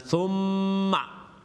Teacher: Now listen, meme's got a tashdid, and you know when a meme has a tashdid, it's the most complete ghunna, akmal ghunna